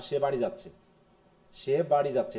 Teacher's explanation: এটা সিম্পল, কোনো ইন্টোনেশনের রাইজিং নাই